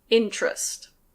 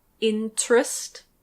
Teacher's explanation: Again we have a /t/ followed by a /r/, so it becomes chr.